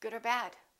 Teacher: But remember, if you're continuing the sentence and you know where you're going with the sentence and what you're going to say, and there's no pause after the or, then make sure you say it a little faster and reduce the vowel and just say uh